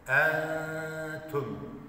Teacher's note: hava boşluğu oluşturup ses buruna verilerek bir kısmını gunne yaparak, tutarak ihfa yapmış oluyoruz. En diye kapalı.